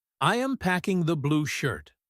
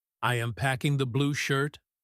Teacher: If his voice drops at the end, he is just stating a fact. · But if he says, "I am packing the blue shirt?" with his voice going up at the end, he is actually asking a question. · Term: rising declarative